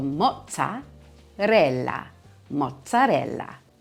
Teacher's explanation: two consonants together in Italian, you're putting the emphasis on that section of the word.